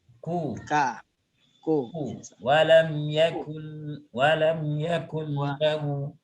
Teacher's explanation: Jadi pangkal lidah ketemu dengan langit-langit yang bertulang ya.